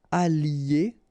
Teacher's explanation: I don't make the liaison just for you to listen carefully